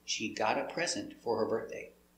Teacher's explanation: The T changes to a D.